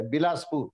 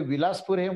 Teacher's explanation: इथे व ह्या ठिकाणी ब चा उच्चार केलाय.